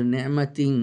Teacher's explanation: তানবিনের পরে ইখফার অক্ষর তা আসছে, নি'মাতিন ইখফা করছে গুণা সহ